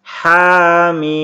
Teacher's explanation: Huruf H dibaca panjang 2 harokat saja, kemudian mimnya 6 harokat.